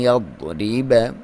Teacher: عین، اور یہ جو آپ نے غنہ کرنا ہے ایک الف کے برابر ناک میں سے آواز نکالنی ہے، اور ضاد جو ہے یہ آپ موٹا کر کے پڑھیں گے اس کے صحیح مخرج سے، کیونکہ زبان کی کروٹ کو آپ اوپر والے دانتوں جو ہیں چاہے ایک سائیڈ ہے یا رائٹ سائیڈ یا لیفٹ سائیڈ کے ساتھ جڑوں کے ساتھ لگائیں گے تو ضاد کی ادائیگی مخرج کی ادائیگی ہوگی، موٹا پڑھیں گے۔